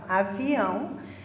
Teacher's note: A última sílaba é a sílaba tônica, é o ão, então ela é uma oxítona.